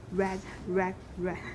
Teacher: there's no final ptk there's only a glottal stop